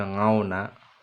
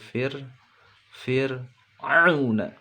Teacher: Au pendek, auna pakainya u bukan pakai o, bukan fir ngauna tapi fir auna.